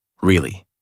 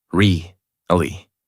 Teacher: flat voice. No rise, no fall. This sounds robotic and boring.